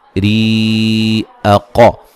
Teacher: را کو باریک پڑھا جائے گا